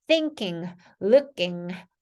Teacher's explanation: 혀 뒷부분은 입천장에 안쪽에 붙였다가 풀릴 때까지 응 소리 내주면 되겠죠